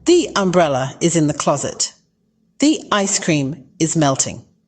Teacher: the e in the flows smoothly into the vowel sound that follows this is why we pronounce the as the before vowel sounds